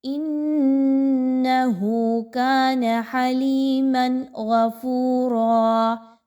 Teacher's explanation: یعنی تنوین کی آواز کو ہم نے بڑا کلیئر پڑھا ہے، غنہ نہیں کیا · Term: اظہار